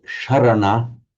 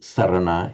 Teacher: Incidentally, Sanskrit has, but Pali does not have the sh sound. In fact, Sanskrit has a s and a palatal sh and a retroflex sh, but they're all a s in Pali.